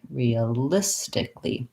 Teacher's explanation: that a is basically silent and there's kind of an extra l there